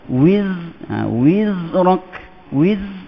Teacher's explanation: Zai tu huruf rakhwah. Dibaca dengan rendah. Dibaca dengan tidak ada angin.